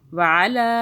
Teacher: علی لام کے اوپر 3 الف کے برابر کھینچنا ہے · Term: چھوٹی مدہ